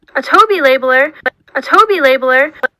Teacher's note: just kind of like consistently goes up in f-zero it's a linear sort of rise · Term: low plus high star